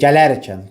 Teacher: Vurğu gəlir ikinci hecəyə.